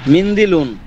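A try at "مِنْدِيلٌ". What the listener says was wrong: মিংদিলুন, মিন্দিলুন না, মিংদি টান দেবেন। আমি টানের কথা কেন বলছি? হ্যাঁ হ্যাঁ, টানের কথা বলছি এজন্য যেন পরবর্তীতে লেখার ক্ষেত্রে এখানে যে একটা ইয়া আছে, এই টানের মাধ্যমে যেন বোঝা যায়। হ্যাঁ, এজন্য যেখানে যে যতটুকু টান হবে সেখানে ততটুকু টান দিয়েই মুখস্থ করতে হবে।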